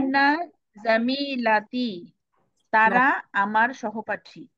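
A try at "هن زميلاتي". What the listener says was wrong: এই যে হুন্না জামিলাতি, একটু টান হবে। হুন্না জামিলাতি,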